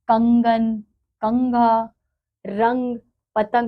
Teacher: इसको अनुस्वार कहते हैं इसका उच्चारण नाक से होता है